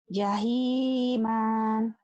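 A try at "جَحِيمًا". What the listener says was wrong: Bukan. Bukan. Iya, tapi jangan jahiman, jangan panjang. Jahiman, kayak orang Judes. Jahiman, gitu pendek. Iya, kecuali kalau dihentikan jahima, itu madiwad. 2 patah dibaca 1 jika dihentikan. Karena ini kan dihentikan, jahiman dibaca apa adanya lagi, jahiman.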